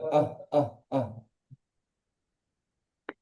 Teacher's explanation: সাকিন ওয়ালা হামজাকে ধাক্কা দিয়ে বা ঝটকা দিয়ে উচ্চারণ হয়।